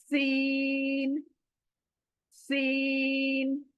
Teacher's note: ऊपर के नीचे के दांत क्लोज आएंगे और आपकी जुबान पीछे से नुकीली बनाकर सीन को पढ़ेगी। · सीटी आनी है, दोनों दांत हमारे लगने हैं, और जबान पीछे से सीन बोलेगी। जबान दोनों दांतों को टच करके सीन बोलेगी। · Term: सीटी वाली आवाज